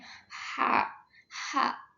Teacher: tidak ada getaran dan dia itu masuk ke artikulasi geseran. Ha, itu lembut banget ketika mengeluarkan suaranya.